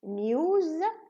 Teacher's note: The P in paper is voiceless. And the S, the za in news is voiced.